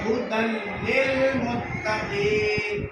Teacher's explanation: یا تو اس کو ادغام تام یا ادغام بلا غنہ، یعنی مکمل ادغام ایسا ہوا کہ نون کا کچھ بھی کیفیت باقی نہ رہی · جس حرف پر تشدید ہے اس کو 2 مرتبہ پڑھتا ہوں، تشدید کی آواز میں قسم کی سختی ہوتی ہے · تو یہ ہدن کے تنوین کا جو نون تھا وہ بدل گیا لام سے